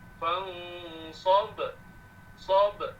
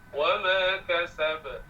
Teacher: sukun asli atau sukun arid, bunyi qalqalahnya sama, tak ada beza